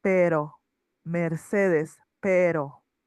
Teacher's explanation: the R here is not going to have a strong pronunciation. It's more weak. It will be pero mees pero.